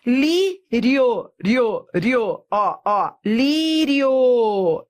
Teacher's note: Eu fui da semivogal para a vogal. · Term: ditongo crescente